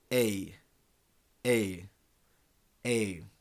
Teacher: and finishes around so together it becomes yeah this one here starts off at around a and finishes around e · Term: diphthongs